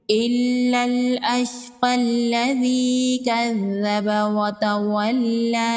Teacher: اگر یہاں پر ہم وقف نہیں کرتے تو ہم قاف کو لام کے ساتھ ملائیں گے۔